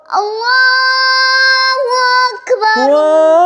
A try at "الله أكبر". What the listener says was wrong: غلط, شروع سے ہی غلط پڑھ رہے ہو نا. سیدھا نہیں اٹھانا اللہ, سیدھا نہیں اٹھانا, اوپر سے اٹھانا ہے. یار بات سنا نا, اللہ کھینچ کیوں رہے اس کو.